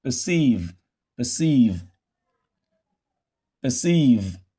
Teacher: Instead of pronouncing this ER as and say perceive, no, you reduce it. Instead, you pronounce it as a schwa because this R controlled vowel is now found in a syllable that is not stressed